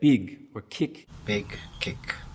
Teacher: if you follow that kit vowel with a g or a k a hard g or a k sound that's actually going to keep it from centering it's going to keep it up so you get big or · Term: kit centering